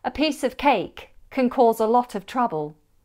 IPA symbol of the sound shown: əv